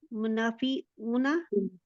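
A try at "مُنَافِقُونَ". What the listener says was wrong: मुनाफिकूना, काफ है ना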